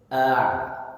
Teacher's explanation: Makhraj ain itu di tengah tenggorokan, wastul halqi. Nah, hamzah jelaskan a, kemudian masuk makhraj ain. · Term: huruf ain